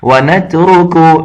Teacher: را صرف موٹا ہے آگے کاف پھر وہی باریک ہے